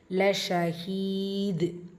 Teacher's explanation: தால் சுக்கூனில் வரும்போது கல்கலத்துல் குப்ரா பெரிதாக கசிச்சு ஓதணும்